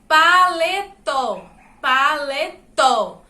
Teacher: o acento na sílaba tó. E a sílaba tó é a última sílaba da palavra. Então, essa palavra é oxítona.